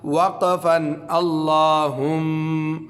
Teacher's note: اچھا اللہم، حمزہ لام زبر ال، لام کڑا زبر لا، اللہ ہا میم پیش ہم، اللہم میم زبر ما، اللہم، وقفا اللہم. غنہ باقی رہے گا کیونکہ میم مشدد ہے، چاہے ہم اس پر وقف بھی کر دیں